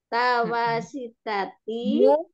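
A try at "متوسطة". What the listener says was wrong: mu mutawasitati. Mutawasitati. Mimnya domah Mimnya domah dulu. Pelan-pelan saja yang, jangan buru-buru.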